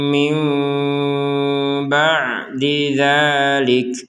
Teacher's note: Di sini ada seorang nun sukun bertemu dengan seorang ba. Jadi, kita membacanya seperti huruf mim. Mim. Seperti itu.